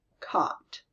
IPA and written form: kɒt (cot)